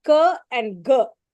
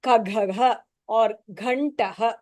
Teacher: So that ka and ga, that which you don't stress that much, are called as Alpa Prana Aksharani.